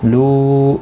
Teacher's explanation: مد منفصل ہے، 3 الف کی مقدار کے برابر کھینچ کر پڑھیں گے